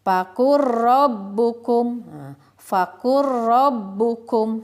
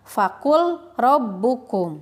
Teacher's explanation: Jadi huruf lamnya tidak terbaca karena sudah ditasydidkan ke huruf ro. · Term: idgham mutaqaribain